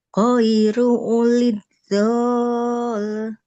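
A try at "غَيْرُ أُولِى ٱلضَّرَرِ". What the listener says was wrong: Bo-nya jangan jadi panjang ya. Ghairu ulid dorori. Ulid dorori.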